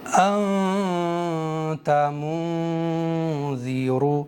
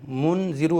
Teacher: جب بھی اخفا کریں گے تو زبان کی نوک مسوڑوں پر ٹچ نہیں ہوگی، صرف ناک سے گنگنا کر کے پڑھیں گے